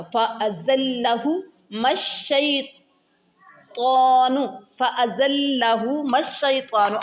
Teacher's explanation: ز سٹی کے ساتھ ہوگا